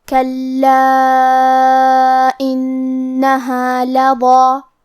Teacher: یہاں نون پہ تشدید ہے تو ہمیں دو حرف کے برابر نون کو پڑھنا ہے · کلمت کلا میں حرف اللام پہ تشدید ہے، لہذا ہمیں دو حرف کے برابر لام کو پڑھنا ہے، کیونکہ تشدید کی اصلیت دو حرف ہے.